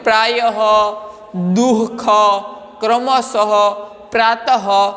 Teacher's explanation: विसर्ग में ह की तरह उनका उच्चारण होता है, जैसे कि प्रायः, दुःख, क्रमशः, प्रातः, तो यह विसर्ग है।